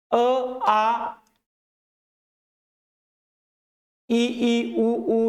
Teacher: कुठल्याही अडथळा शिवाय हा ध्वनी मुखातल्या कोणत्याही अवयवाचा अडथळा न येता जो ध्वनी उच्चारला जातो सरळ बाहेर येतो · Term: स्वर